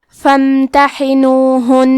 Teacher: فا کے بعد حرف المیم کو پڑھیں گے کیونکہ یہاں میم ساکن ہے تو ہمیں میم کو ظاہر کرنا ہے. ہا کے ادائیگی حلق کے درمیان والے حصے سے ہے آخری میں حرف نون پہ تشدید ہے تو ہم 2 حرف کے برابر نون کو پڑھیں گے اور یہ تشدید کو غنہ سے ادا کریں گے.